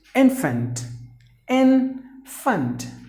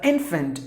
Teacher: There are only 2 syllables. The stress is in the beginning. So infant, meaning any baby, is called an infant.